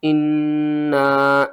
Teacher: نون مشدد ہے، غنہ کریں گے، 2 بار پڑھیں گے، سختی کے ساتھ پڑھیں گے۔